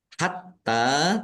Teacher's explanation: t-nya dibaca dobel ada tasdidnya ditekan biar tampak dobel